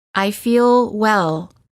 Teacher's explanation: notice how the L is prolonged by keeping the tongue up longer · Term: American L